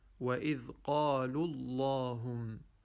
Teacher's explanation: So instead of saying وَإِذْ قَالُوا اللَّهُمْ, we say وَإِذْ قَالُوا اللَّهُمْ, removing the waw completely and going from the lam in qalu straight to the lam in Allahum